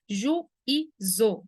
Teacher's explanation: A gente vai separar aqui, por exemplo, para você enxergar a separação de vogais. O U separa do I tônico. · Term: hiato